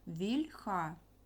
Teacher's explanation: в пом'якшений а не м'який бо це губний звук в це пом'якшений пом'якшення ми позначаємо так як апостроф як кома